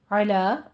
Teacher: अला आइन वस्ते हलक से निकालें